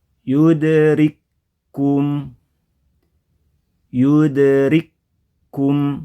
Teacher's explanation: hukumnya Kaf sukun ke Kaf harakat dan bertasdid yudrikum yudrikum ya Kaf yang pertama jadi menghilang